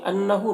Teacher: نون مشدد غنہ ہوگا اور ہا میں الٹا پیش ہے، یہ واو مدہ کی طرح ہوتا ہے تو اسے ایک الف کے برابر کھینچیں گے